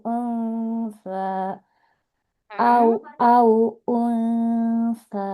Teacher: Kalau unsa ini kan dia makroj sa-nya di ujung lidah ya, menempel ke ujung gigi seri atas. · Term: ikhfa